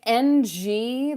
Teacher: The back of your tongue is pressing up at the back of your mouth so that air is flowing through your nose. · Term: ng sound